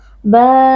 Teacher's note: Man iwad karena kita wakaf pada fathatain. Di sini fathatain diganti dengan fathah lalu kita baca panjang 1 alif atau 2 harokat.